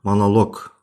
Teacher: vurğu O-ya düşdüyü üçün o deyə də tələffüz olunur.